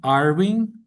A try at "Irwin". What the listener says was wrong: Irwin, Irwin. you got to give that word a W sound. Irwin.